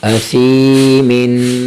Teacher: یہاں حرف سا کی اپنی آواز، سا کو سین نہیں پڑھنا